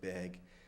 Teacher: So the vowel is changing a lot before G sounds, and this seems to be very typical of Upper Midwestern.